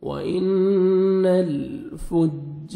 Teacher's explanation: وَإِنَّ الْفُجَّارَ، جیم مشدد ہے، جیم پہ شد ہے، آپ نے سختی سے ملانا ہے فا کو جیم کے ساتھ، اور الف مد ہے، 1 سیکنڈ، ایک الف کے برابر آپ نے جیم کو کھینچنا ہے، اور را کو مرزبر ہے، را کو موٹا کر کے پڑھیں گے